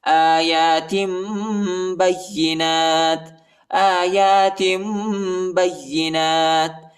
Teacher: ادھر ہم اقلاب کریں گے، یعنی آخر میں میم کی آواز نکالیں گے اور اخفاء بھی کریں گے